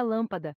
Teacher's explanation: as sílabas podem ser tônicas ou átonas observe a palavra lâmpada a sílaba lá é tônica é a mais forte da palavra enquanto que as outras duas pa e da são átonas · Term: sílaba tônica